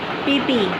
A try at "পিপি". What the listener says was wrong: হ্যাঁ ওরম ঠোঁট ঢোকালে চলবে না